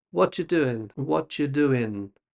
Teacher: So, you lose the G on the end of doing. And what are you becomes what you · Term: connected speech